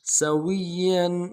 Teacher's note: یمشی امن یمشی سویا، سین کی سیٹی باریک ہوگی، باریک ادا کریں گے. واو کو یا کے ساتھ ملانا ہے، یا کے اوپر تشدید زور دیں گے · اگلے یا کے اوپر تنوین ہے غنہ کریں گے